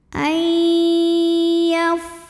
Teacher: Maka nun sukunnya masuk ke ya, ai dengan dengungan, artinya kita tahan bunyinya. Ayyaf, fa-nya keluarin angin, jangan lupa ya karena fa ini punya sifat namanya hamas, salah satunya ya dari segi keluarnya angin.